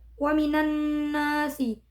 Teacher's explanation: Kemudian pada ayat ke-8 lafaz wa minan nasi terdapat hukum bacaan idgham syamsiyah yaitu pada alif lam yang bertemu dengan nun. Cara membacanya adalah dimasukkan pada huruf nun.